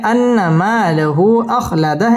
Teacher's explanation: লাহু মধ্যে মুনফাসিল তিন আলিফ টান দিয়ে পড়তে হবে।